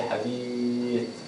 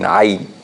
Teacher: in the word hadith, we are not actually pronouncing the ya. And in the word ayn, we are saying ya.